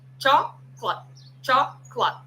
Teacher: Uma palavra que teria três, quatro sílabas vira uma só.